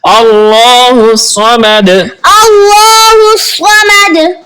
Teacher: صاد حروف مستعلیہ میں سے ہے، تو اس کو پر یعنی موٹا پڑھیں گے